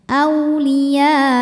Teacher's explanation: saat berhenti aulia, ya-nya panjangin dulu, masuk hamzah ada tempat nabernya. Jadi agak dihentak sedikit. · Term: mad wajib